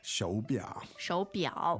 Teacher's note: The tones on that are ，two third tones。